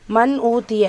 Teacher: நூன் சுக்குனை தொடர்ந்து ஹம்ஸா இருக்கு இத்ஹார் உள்ளது உள்ள மாதிரி ஓதணும் குன்னா செய்யக்கூடாது